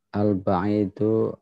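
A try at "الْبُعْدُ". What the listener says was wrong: Kalau ba'id itu ada iya setelah ain.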